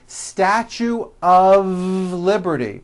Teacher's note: Even though the word of is spelled with an F, we pronounce the word of with a voiced V.